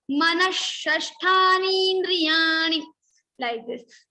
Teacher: we will repeat this sha, murdhanya sha 2 times, and we will remove this ha sound, that is visarga